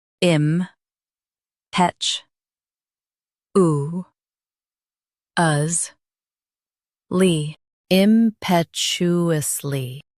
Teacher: Emphasize petch and soften oo. The T is clear.